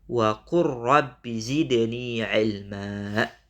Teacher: Nah, boleh kita baca wa qul rabbi zidni ilma. Tapi lamnya kita tinggalkan, masuk ke huruf ra.